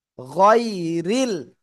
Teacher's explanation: রার নিচে জের চিকুন করে পড়তে হবে